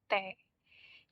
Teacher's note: T ini dimana lidah menyentuh gigi atas atau langit-langit